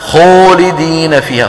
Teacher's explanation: خلط صوتها يعني صوت الألف بشيء من صوت الواو، هذا بعض أخواننا الذين لم يدركوا معنى التفخيم الذي شرحته لكم في الأيام الماضية، يظنون أن التفخيم زم الشفتين عند نطق الحرف المفخم، فيقولون خولدين فيها.